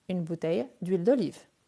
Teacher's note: Comme il s'agit d'un H muet, je fais l'élision.